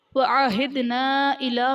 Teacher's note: وَعَهِدْنَا إِلَىٰ میں الف سے پہلے نون پر زبر الف مدہ کا قاعدہ اور حرف مدہ کے بعد حمزہ دوسرے کلمہ میں آ رہا ہے، تو یہاں پر مد منفصل کا قاعدہ ہوگا